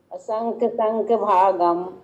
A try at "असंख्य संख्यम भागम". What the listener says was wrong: असंख्य संख्यम भागम। संख्यम बोलो, नहीं संख्य बोल रहे हैं आप, गलत। हाँ, असंख्य संख्यम भागम